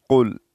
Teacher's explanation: اس میں جو قاف ہے یہ موٹا قاف ہے، اس کو موٹا ہم پڑھیں گے